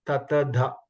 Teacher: my tongue touches the teeth when you say data